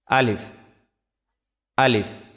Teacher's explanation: আলিফ মুখের খালি জায়গা হইতে উচ্চারিত হয়